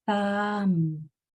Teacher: First, my tongue was between my teeth and I was blowing. Then my mouth was in a lazy shape with my tongue just hanging out in the middle. Then my lips came together. 3 sounds. Thumb.